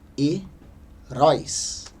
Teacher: Nós percebemos que a sílaba mais forte é a última